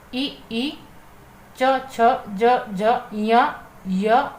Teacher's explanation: ई, च, छ, ज, झ, य और आपका श जो है वह आपके तालु से उच्चरित होते हैं। तालु से उच्चरित होने के कारण वह आपके तालव्य कहलाते हैं।